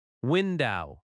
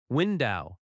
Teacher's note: Feel that first beat strong.